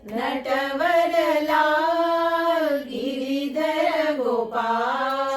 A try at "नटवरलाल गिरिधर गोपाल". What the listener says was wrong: So after the lal there is no space.